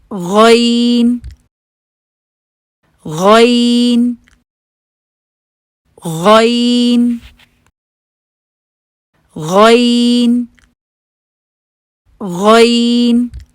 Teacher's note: अब आप इस हर्फ की अदायगी शुरू करेंगे। जुबान की जड़ को ऊपर उठा के उसके मखरज पर लगाएंगे। हंठों को गोल नहीं करेंगे और जुबान के बीच में कर्व भी आएगी।